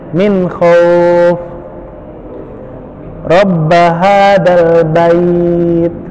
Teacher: pengucapan huruf yang lembut tanpa harus memaksakan, yaitu pengucapan huruf waw sukun dan ya sukun yang sebelumnya adalah huruf berharokat fathah. Bacanya ringan, santai. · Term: sifat lin